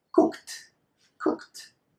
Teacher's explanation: when verbs finish in K and you add the ED, the only thing you need to do is transform this ED into a T sound. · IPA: /t/